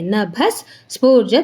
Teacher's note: ವಿಸರ್ಗದ ಮುಂದೆ ಸ ಇರೋದ್ರಿಂದ ಆಟೋಮ್ಯಾಟಿಕ್ ಆಗಿ ಏನಾಗುತ್ತೆ ನಮಗೆ ನಭ ವಿಸರ್ಗ ಅರ್ಧ ಸ ಆಗುತ್ತೆ